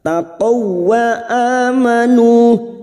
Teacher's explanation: masuk ke huruf waw, hanya masuk tanpa mendengung, tanpa ditahan lama-lama